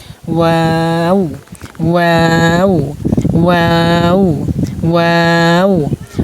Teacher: হরফ উচ্চারণ স্থান দুই ঠোঁট উচ্চারণ সময় গোল হয়ে যায়, মানে দুই ঠোঁট গোল হয়ে যাবে। ওয়াও মানে প্রথমে একটু বেশি গুডল করে পরে একটু ফাঁক করে পরে আবার গুডল করে ফেলবেন।